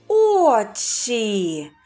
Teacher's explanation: звук ч завжди вимовляється твердо А перед звуком і він тільки пом'якшується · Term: пом'якшений приголосний звук